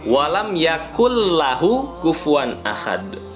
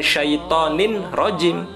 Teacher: kalau n-nya tidak lagi dibaca melainkan langsung masuk ke huruf berikutnya itu berarti hukum bacaan Idgham